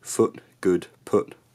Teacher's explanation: northern accents also don't have what's called the foot strut split so in my accent foot good put all have one vowel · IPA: [ʊ]